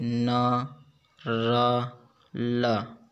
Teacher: अगला है और लास्ट उच्चारण स्थान के आधार पर 7वां व्यंजन वर्स्य व्यंजन है। जिन व्यंजनों के उच्चारण में जीभ ऊपरी मसूड़ों अर्थात वर्ष को स्पर्श करती है वर्स्य व्यंजन कहलाते हैं।